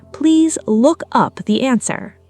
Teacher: Stress on up, not look.